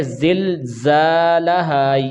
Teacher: یہ زا جو ہے یہ سختی کے ساتھ پڑھا جائے گا، یہ حروف صفیریہ بھی ہے